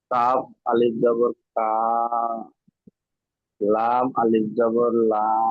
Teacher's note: আলিফের ডান দিকে জবর থাকলে তাকে আলিফ মাদ্দা বলে। আলিফ মাদ্দাকে এক আলিফ পরিমাণ টান দিয়ে পড়তে হয়।